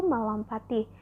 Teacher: Contohnya dalam penimbuhan sufiks i, pada kata dasar lompat terjadi pergeseran di mana fonem T yang semula berada pada suku kata pat menjadi berada pada suku kata ti. Contohnya lompat ditambah i, yaitu melompati. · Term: pergeseran fonem